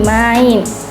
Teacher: diucapkan dalam satu suku kata dengan perubahan kualitas bunyi vokal pertama menuju vokal kedua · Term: diftong